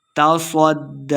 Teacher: صاد کو موٹا پڑھنا ہے، دال مشدد ہے، صاد کو دال کے ساتھ ملا کے پڑھیں گے